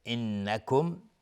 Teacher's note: نون مشدد دو حرکت غنه میدیم